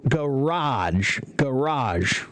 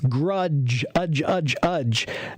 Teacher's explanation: it's ah not uh uh uh it's bigger